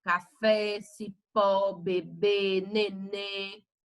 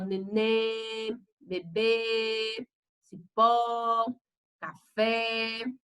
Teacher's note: Então, ela é oxítona, porque a última sílaba ela foi acentuada ou ela é com mais intensidade.